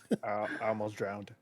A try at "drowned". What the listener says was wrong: There's no D there. Only the past tense.